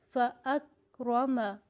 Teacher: آواز کو سختی کے ساتھ بند کیا ہے، قلقلہ نہیں ہونے دیا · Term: صفت شدت